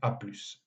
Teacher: quand on veut abréger l'expression, par exemple, à plus tard, on prononce le S final, à plus. Donc, on assiste toujours à cette tendance de prononcer les consonnes finales dans certains cas spécifiques pour éviter des confusions possibles.